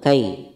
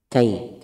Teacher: di sini ada ya sukun didahului fathah mad layyin